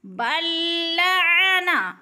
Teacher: عین کو حلق سے نکالنا ہے، واضح کر کے پڑھنا ہے